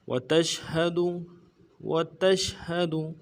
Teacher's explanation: تا کو شین کے ساتھ ملانا ہے، اور پھر تفشی واضح کریں گے شین کو ، ہاں کو نرم سے ادا کریں گے، دال کو بھی